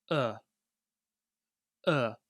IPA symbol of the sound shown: ə